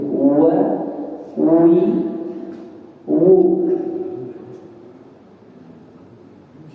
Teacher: wa itu dengan mengerutkan bibir atau memonyokkan bibir.